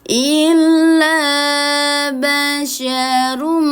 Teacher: tahannya pada huruf mim ditekan dulu baru ditahan. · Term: idgham bighunah